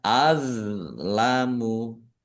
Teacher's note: Do sukun bukan qalqalah jangan dipantulkan